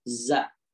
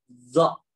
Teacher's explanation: Za ini ujung lidahnya turun ke bawah. Ya. Kalau zo ujung lidahnya nempel ke gigi.